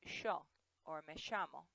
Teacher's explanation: In Argentina, especially around Buenos Aires, they actually say sh instead of ya. So they would say sho or me llamo.